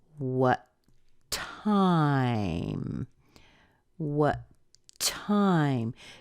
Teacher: T sound so we're going to say what time what time notice I hold the T just a little bit longer that makes up for the two T's that are there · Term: really strong T sound